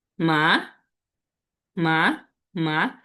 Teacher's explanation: Second tone, এটা হচ্ছে rising tone. আমাদের শব্দটা আমাদের যে স্বরটা আছে এটা হচ্ছে একটু উপরে উঠবে এরকম।